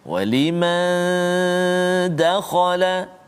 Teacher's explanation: nun mati bertemu dengan dal, dengung dua harakat